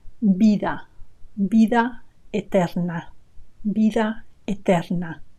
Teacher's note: They both sound B, vida, vida, vida eterna. So in Castilian Spanish, which is the accent that I teach, and in fact in most of Spain, the sound of the V is B